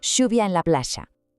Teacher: Y fonéticamente su rasgo estrella es el yeísmo rehilado, pronunciar la doble L y la Y como un sonido she